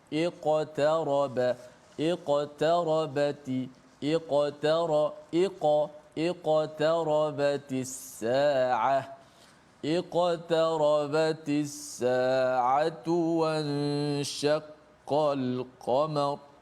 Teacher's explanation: Iqtaraba, ada qaf mati di tengah-tengah kalimah ataupun ayat ini, maka dibaca dengan qalqalah yang sughra, yang paling martabat yang paling rendah sekali.